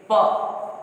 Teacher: कहने का मतलब जब बोलेंगे और दोनों ओष्ठ स्पर्श करें, दोनों ओठ मतलब द्विवचन जब स्पर्श करेंगे तब यह ध्वनि निकलेगी